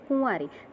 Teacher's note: કુંવારીમાં કુ છે, ઉપર અનુસ્વાર છે, પણ એનું ઉચ્ચારણ નથી થતું, માટે તે લઘુનો લઘુ જ છે. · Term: અનુસ્વાર મંદ